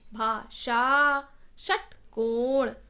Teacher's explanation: व्यंजन श से षटकोण में हम अपनी जीभ को तालू से टच कराते हैं, भाषा, षटकोण।